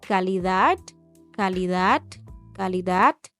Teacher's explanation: no terminan pronunciando la letra D, sino que ahí simplemente cortan el aire y siguen con la otra palabra